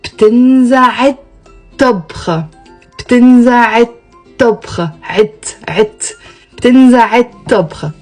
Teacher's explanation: So instead of saying الطبخة, we will pronounce it الطبخة. Even more, with a liaison, instead of saying بتنزع and then saying الطبخة, you can say بتنزع الطبخة